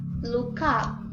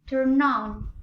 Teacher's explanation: we pronounce the word as the consonant sound have moved from the end of first word to beginning of the next word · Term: consonant vowel linking, consonant-vowel linking